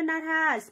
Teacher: नारहास भनेको आउनुभयो नाको हि फिनमा नारहास नरहसँगै उच्चारण भएको छ यो भनेको महाप्राण न न अनि ह